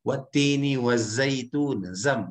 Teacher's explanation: Ada hembusan yang cukup keras, dia punya sifat yang namanya sofir, ada hembusan kerasnya di sana.